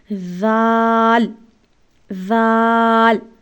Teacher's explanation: ذال کو بھی سا کی طرح سے نرمی سے ادا کیا جائے گا۔ دانتوں کے درمیان زبان کی نوک رکھ کر اس کو ادا کیا جائے گا۔